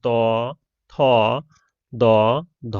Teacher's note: জিহ্বার অগ্রভাগের সাথে দাঁতের স্পর্শে এই ধ্বনিগুলো উচ্চারিত হয়। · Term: দন্তধ্বনি